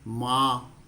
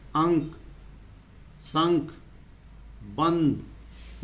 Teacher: नाक से ज्यादा आवाज आ रही है नाक से हवा ज्यादा आ रही है और मुंह से कम